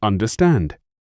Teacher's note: is three syllables with the stress on the third